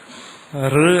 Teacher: പകുതി സ്വരവും എന്നാൽ ഒരു വ്യഞ്ജനത്തിന്റെ ഛായ അതിനകത്തുണ്ട്